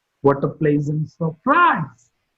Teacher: Surprise is marked with a falling tone.